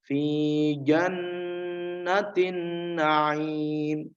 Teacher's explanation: Jannah nun bertasydid ya. Mendengung ya, mendengung.